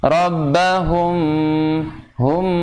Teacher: Langsung antum pindah dulu, tahan dulu, karena mim sukun bertemu dengan huruf ba dan memang harus dengung samar. Rabbahum, hum, tapi ada udara yang masuk ke sini, pangkal hidung. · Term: ikhfa syafawi